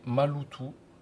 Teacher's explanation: Par exemple, maloto prononcé malutou. Le lot s'entend plus fortement que ma et le ta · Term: accent tonique